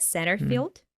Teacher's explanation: I think I heard that he dropped the sound T in the word center.